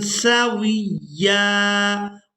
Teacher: واو کو یا مشدد کے ساتھ ملاتے ہوئے سختی کے ساتھ ادا کریں گے۔